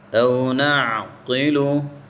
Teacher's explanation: اس قوف کو موٹا کریں گے، اس کو یعنی یہاں پر تخفیم ہوگی، موٹا کرنا